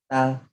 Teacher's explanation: Ta, hujung lidah ke tempat pertemuan gigi dan gusi atas. Letakkan hujung lidah kat situ.